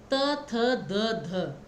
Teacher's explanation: दंत्य जहाँ पे आपकी जिह्वा और ऊपर के होंठ टच होते हैं